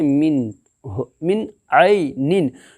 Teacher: نون ساکن کے بعد حروف حلقی کے 6 حرفوں میں سے عین ہے، اس لیے اظہار حلقی ہوگا. اظہار حلقی کو ظاہر کر کے بلا گنہ کے جلد پڑھیں گے